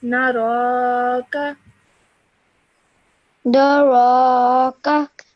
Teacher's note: it has a simple fatha, so only do it for 1 second or one count